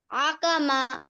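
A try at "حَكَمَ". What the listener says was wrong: না, দেখে বলো, হা, হা, কণ্ঠের মাঝখান থেকে। হা, হা, হাকামা, হাকামা।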